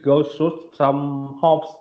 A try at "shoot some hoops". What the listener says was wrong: Okay, so it's shoot some hoops. So it's the oo sound, hoops.